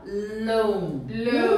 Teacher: Loan. Uma única sílaba e esse A, ele não. Ele é mudo, a gente não pronuncia esse A.